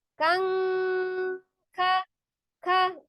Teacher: Kan kafnya, pangkal lidahnya nekan ke langit-langit yang keras. Kang, tekan kan sudah membentuk mahror huruf kaf.